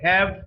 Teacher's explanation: ha is a voiceless glottal fricative voiceless because the vocal cords come our hair loosely together is